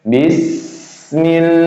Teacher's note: sifat dari huruf sin ketika sukun, hams, nafas masih berjalan keluar. Nah, jadi mulut kita masih mengeluarkan udara.